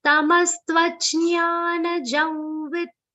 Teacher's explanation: The Anuswar on ja will be pronounced like a nasal V consonant.